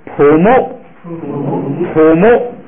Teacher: 后边这个摩本来是低声要变成平声 ，本来是喔要变成乌，所以就变成了木，哎，普木，这是这个变音。另外我说一下，这个变音这个呀不重要。你比如说，我不重视这个变音，我就按原音读，没问题，谁都能听懂。只不过这个让人家听起来啊，就说你这个人读书这个文绉绉的，咬文嚼字的，这个不像那个读起来人家读起来很顺很轻松，但是呢听懂没有问题。所以这个变音的不重要